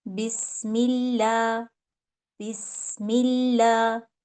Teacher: اگر اسم جلالہ سے پہلے کسرہ آ جائے تو اس کو ہم باریک پڑھیں گے، یعنی یہاں پہ لام کی آواز باریک ہو جائے گی